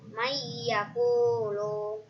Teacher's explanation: Alasannya karena nun sukun bertemu dengan ya. Cara membacanya masuk dengan mendengung 3 harokat. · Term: idgham biguna